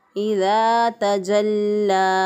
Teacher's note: जीम की अदायगी में उसी तरह शीन और जीम दोनों का मखरज एक ही है। ज़ुबान का दरमियान ऊपर के तालु की तरफ उठाएं तो ऊपर के तालु के साथ लगाएं तो जीम अदा होता है।